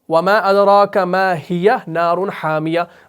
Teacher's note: بغیر سانس توڑے آپ ما ہیا بھی پڑھتے ہیں اور آگے نارن حامیہ بھی پڑھتے ہیں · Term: وصل